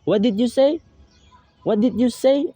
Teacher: So the word say in the sentence is given a rise intonation. It's because this sentence emphasizes some doubt statement and some WH type of question.